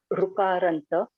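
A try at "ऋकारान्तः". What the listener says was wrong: I'm hearing the ukara u sound. That is not correct.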